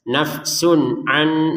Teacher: nun mati bertemu nun ini dimasukkan dengan dengungan. An yang awalnya tertulisnya an, lalu kita bacanya an seperti itu, dimasukkan kepada nunnya ini.